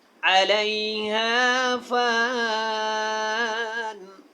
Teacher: کل من علیہا فان، اب یہ الف ہے اور آگے نون ہے، تو آپ نے کیا کرنا ہے، پہلے آپ نے الف کو بھی ادا کرنا ہے، پھر نون کو اس کے ساتھ ملا دینا ہے، اس کی دونوں زیر ختم ہو جائیں گی۔